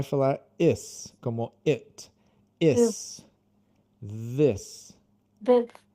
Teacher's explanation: essa pronúncia é o TH, como se fosse o Z com a língua para fora